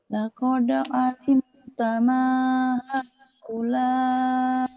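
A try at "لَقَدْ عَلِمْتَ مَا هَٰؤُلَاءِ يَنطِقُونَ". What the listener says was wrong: Pendek. T-nya pendek. Kakak.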